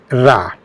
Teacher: र को लुंठित व्यंजन या इसके लिए एक और शब्द है प्रकंपित व्यंजन कहा जाता है। इसलिए कि इसके उच्चारण में जीहवा का अग्र भाग कंपित होता है। उसमें प्रकंपन होता है।